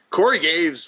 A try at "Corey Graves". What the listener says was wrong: you said Gaves. Corey Graves. Corey Graves.